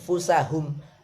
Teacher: Terus fa, nun sukun atau tanwin ketemu fa, fusahum, langsung dengung ke makhrajnya fa. Ini gigi tekan di atas bibir bawah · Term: ikhfa